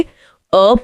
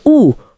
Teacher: अ पूरा खुला मुंह और ऊ होठ गोल